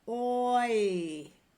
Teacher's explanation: we start with a round and go to a smile. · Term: slide vowels